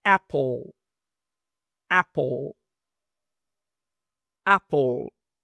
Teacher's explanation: es como una a muy abierta, superabierta. Es casi como ea, pero rápido